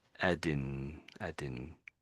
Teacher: so there's no air coming out of my mouth. It's just coming out of my nose. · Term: n sort of a sound